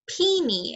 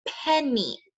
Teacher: a short vowel sound. It's saying eh, not E. It's not peeny, it's penny.